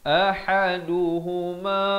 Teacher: A di pangkal kerongkong, H di pertengahan kerongkong. Ahaduhuma, 4 atau 5 harakat.